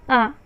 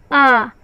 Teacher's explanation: दीर्घ स्वर है, द्विमात्रिक है, दूना समय लगेगा